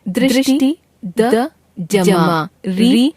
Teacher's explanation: हिंदी में संस्कृत से आए हुए री स्वर का उच्चारण समाप्त हो चुका है। हिंदी में इसका उच्चारण री र जमा ई के रूप में किया जाता है।